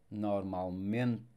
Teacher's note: don't forget that E at the end of words, it will sound quite mute.